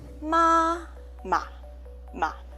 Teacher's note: The second syllable, ma, ma, ma. You pronounce soft and light. And we say this is a neutral tone.